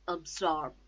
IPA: əbˈsɔːb